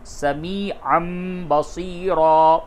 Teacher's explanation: تنوین کے بعد با آیا، اس کی آواز کو میم سے بدل کر کے پڑھیں گے، تو عین دو زبر عن نہیں بولیں گے بلکہ عین میم زبر ام، سمیعًا بصیرا۔ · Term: قلب